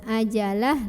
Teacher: Sedangkan ketika berhenti ha jadi sukun. Ajalah, lahnya tetap pendek.